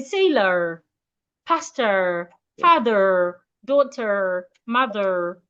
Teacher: You can decide to add the R sound if you want to sound American and say sailor, pastor, father, daughter, mother.